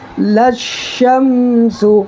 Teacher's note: direct یہاں شین پر تشدید اس میں ملائیں گے اور اس کو 2 مرتبہ پڑھیں گے